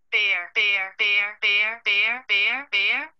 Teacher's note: gradually change the pitch contour from statement to question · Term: continuous prosody